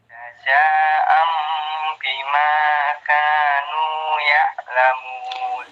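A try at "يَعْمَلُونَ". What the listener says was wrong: Ya'lamun apa ya'malun?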